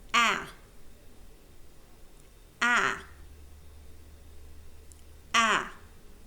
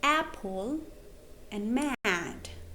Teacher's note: this is a very open sound so in order to pronounce it you have to open your mouth a lot this is the sound you will find in words like Apple